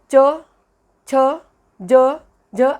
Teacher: तालव्य वर्ण म्हणजे टाळूच्या स्थानापासून होणारा उच्चार